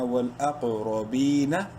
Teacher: با کو ایک کے برابر لمبا کریں گے